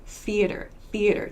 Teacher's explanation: So no vocal cord use here. Theater, theater, just air to make this TH sound. So it's very quick, very short. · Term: unvoiced TH sounds